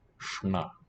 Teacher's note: the N is basically dental, but because it's in contact, it retroflexes.